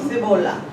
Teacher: o que nos delata como non falantes de portugueses de primeiras é a nosa interdental, decimos cebola.